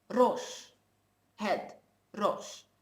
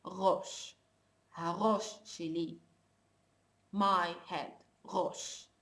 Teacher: in modern Hebrew, as I told you, the one that is spoken in Israel nowadays, they don't roll their tongues anymore. They pronounce the letter ra, which is an R.